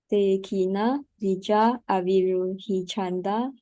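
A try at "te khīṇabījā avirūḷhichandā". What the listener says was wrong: Where is one check? You're missing one check. One is non-aspirate, the other one is aspirate. Here, see, C and then CH. You can see here, CH.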